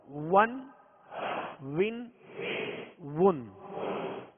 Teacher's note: دونوں ہونٹوں کی گولائی سے واو ادا ہوتا ہے